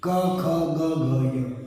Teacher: क वर्ग का उच्चारण कंठ से होता है